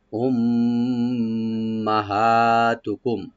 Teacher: উম্মা এখানে মিম মুসাদ্দাদ, এখানে একটু গুণা করবো আমরা